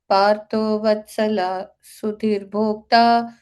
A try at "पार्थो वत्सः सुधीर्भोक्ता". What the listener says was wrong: वत्सला कहाँ पढ़ा आपने?